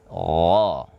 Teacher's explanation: Gha seolah-olah ada o tapi tidak dibaca o. Ghasiqin, qaf tebal. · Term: huruf gha